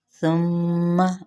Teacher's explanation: मीम मुशद्दद पे गुन्ना